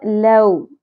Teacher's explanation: لو حرف لین ہے، واؤ نرمی سے ادا ہوگا